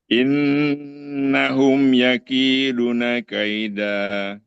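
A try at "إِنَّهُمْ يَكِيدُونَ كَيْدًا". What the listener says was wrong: Belum. Belum. Masih pendek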